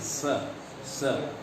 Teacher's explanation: तालव्य स बोलने के लिए आपको तालु के साथ स बोलना पड़ेगा। जैसे जहाँ से च निकल रहा है वहाँ से स।